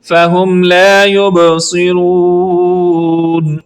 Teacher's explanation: آخر پہ مد عارض کی وجہ سے لمبا کریں گے